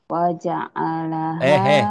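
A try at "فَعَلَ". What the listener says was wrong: Fa'ala. Oh, fa'ala yang bawah bukan wa yang bawah. Ini yang ini. Yang fa'ala, fa'ala.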